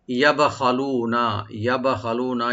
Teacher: ইয়াটাকে ওপেন রেখে বাটাকে একটু আমরা কলকলা করব, ইকু করব। ইয়াব, খটাকে একটু রাইট দিয়ে ডিপ করে পড়ব।